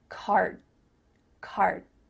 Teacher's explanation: This is a little bit different than the word car, I drive a car, because your mouth is making the shape of that D sound, but it's not making the vibrations happening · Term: cut off that final D